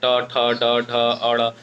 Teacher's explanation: आप उच्चारण करके देख सकते हैं, ट, ठ, ड, ढ, अड़। आप जब बोलेंगे तो खुद ही आपका जो जबान है वो ऊपर की छत पे जाके सटेगा। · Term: मूर्धा